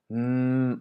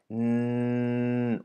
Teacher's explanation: it can be extended by your vocal cords as long as you want